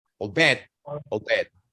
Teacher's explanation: So you don't say I will or I'll, you say oh.